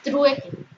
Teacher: Trueque es la unión de U, que es cerrada átona, más la E, que es abierta. Forma diptongo.